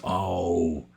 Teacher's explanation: It's actually two sounds. Oh, you know, it's like your mouth is changing when you're saying it.